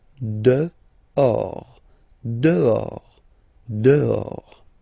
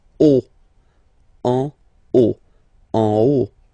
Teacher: Okay, so remember final S not pronounced, and then this H in French doesn't exist phonetically, so you don't pronounce it